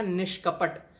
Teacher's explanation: अब यहां पे न पर ई का स्वर भी है, विसर्ग भी है और इनका मेल क से हो भी रहा है, तो विसर्ग परिवर्तित हो गया मूर्धन्य श शुद्ध व्यंजन में, निष्कपट बन गया।